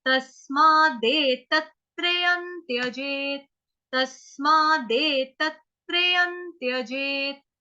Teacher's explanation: य के ऊपर जो अनुस्वार है उसका उच्चारण होगा आधा न, क्यों, क्योंकि त थ ध ध न, अगला शब्द जो आ रहा है वो आधा त आ गया ना, तो त थ ध ध न।